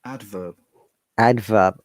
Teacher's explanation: in British English, if you remember, letter R is not pronounced most of the cases.